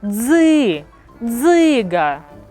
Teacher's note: у слові дзиґа два склади бо ми чуємо два голосних звуки наголошений склад перший